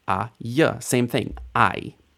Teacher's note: Just the vowel sound plus the beginning of the consonant sound that gets merged into the vowel I. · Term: kamatz yod